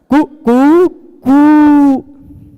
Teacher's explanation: पहले बार ह्रस्व रहता है, उसका फिर दीर्घ रहता है, फिर प्लुत रहता है, कु कु, फिर उससे भी बढ़ के कु, वो वाला 3 वाला, है ना, सुना होगा आपने।